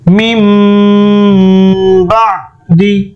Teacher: মিম নুন জের মিন হওয়ার কথা, বাট হয়ে যাবে মিম